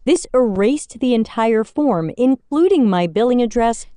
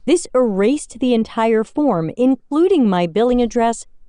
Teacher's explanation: did you hear the word including it was missing my plosive